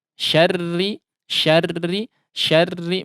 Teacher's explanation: meskipun dia berharakat atau bertasydid ya, tapi karena berharakat kasrah maka dia harus tetap ditipiskan